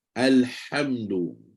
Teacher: Pakai ha yang injak suara tu, ha yang tengah kerongkong.